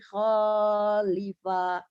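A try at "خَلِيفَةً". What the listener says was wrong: Kho-nya pendek. nadanya mau berhenti ya, tapi terus ragu. Berhenti aja. Jadi iya sesuatu yang ragu tuh didengarnya juga ragu, tak enak gitu ya.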